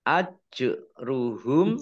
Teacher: jim sukun, bacaan kolkolah, huruf kolkolah, dibaca memantul